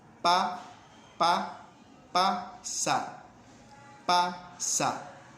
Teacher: Usted puede probar y va a ver de que esa pronunciación no hay ninguna vibración. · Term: sordo